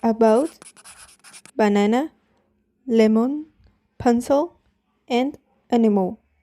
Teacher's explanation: The sound is called schwa. It is a mid-central vowel and the lips are unrounded. The mouth is relaxed and this sound usually appears in unstressed syllables. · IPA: /ə/